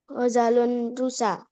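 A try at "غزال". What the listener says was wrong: Iya, ghazalun. Zanya panjang. Ghazalun.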